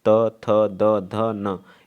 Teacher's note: जिनका उच्चारण ऊपर के दांत पर जीभ लगाने से होता है उन्हें क्या बोलते हैं, दंत बोलते हैं